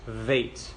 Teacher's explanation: if there's no plug in the bait, it goes vait. It flows out and makes a V sound